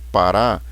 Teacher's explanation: na palavra parar, a sílaba forte é a última. Então, em parar, a sílaba tônica ou sílaba forte é o rá, parar.